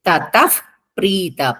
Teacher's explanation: విసర్గులు తర్వాత ప ఉంది కాబట్టి పొల్లు ప వస్తుంది